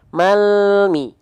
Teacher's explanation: yang keluar bukan Le tapi bunyi konsonan El